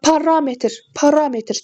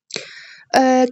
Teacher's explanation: Parametr sözündə raya düşür. Yəni ikinci hecaya düşür. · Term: vurğu